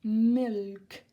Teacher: There is no silent letter, okay? You do need to say the L